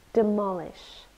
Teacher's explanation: three syllables demolish and we stress the second one